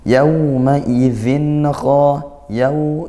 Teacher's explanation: lin dibaca lembut ya, tidak dihentak sekali yaw, tapi yawma idzin, zin kha, tanwin bertemu kha diizharkan, dibaca jelas karena dia izhar halqi hukumnya, bertemu huruf kha yang merupakan huruf halqiyah.